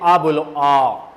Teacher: अग्र स्वर आगे से कब जीभ सक्रिय, देखो ए जो होता है ना, ए, पहले तो आ बोलो, आ, कंठों से आवाज आ रही है, शायद सभी की आ रही है, आ, कंठों से आवाज आ रही है, इसका मतलब पश्च स्वर आ पीछे से बोला जाएगा, जीभ के पीछे से, पीछे वाला भाग, कंठों वाला भाग सक्रिय, यानी कि आ बोला जाता है पीछे से।